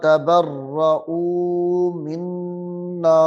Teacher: مد اصلی ہے تو اس کو لمبا کر کے پڑھنا ہے ایک الف کے برابر